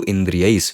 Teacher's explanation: Visarga changes into sakara. So this is sattva sandhi, as we saw in the previous word also.